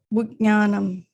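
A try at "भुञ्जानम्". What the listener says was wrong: It's not gya. So the tilde is on top of the N and the J stands as it is.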